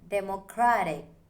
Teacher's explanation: The stress falls on cra.